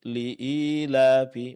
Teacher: mad yang dipanjangkan biasa yaitu dua harakat